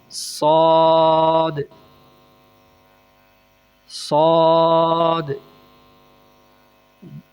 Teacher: شین شین، صاد، زبان کی نوک اور دونوں دانتوں کے اندرونی کناروں سے